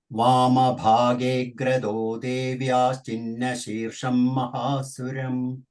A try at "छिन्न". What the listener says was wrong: Power should come. Chinna, Chinna, Cha, Mahaprana power is lacking.